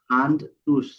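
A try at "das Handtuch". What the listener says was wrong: টুস না, টুক। এই যে উ আছে, ওর পরে আসলে খ হয়।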